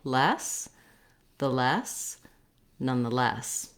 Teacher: So you get that rhythm of quick, quick, long in these words.